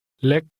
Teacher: little is pronounced with a high tone